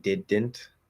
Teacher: I actually didn't flap the D there because I was enunciating it more